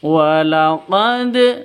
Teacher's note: Karena ada di awal atau di tengah ini bacaan namanya qalqalah sughra gitu. Jadi harus dipantulkan ke dalnya, ke huruf qalqalahnya.